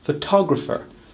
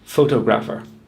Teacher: But in fact, we put the stress on the second syllable, photographer, not the first syllable, photographer.